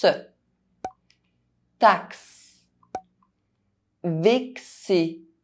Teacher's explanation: Inside French words, X between two vowels is pronounced [ks]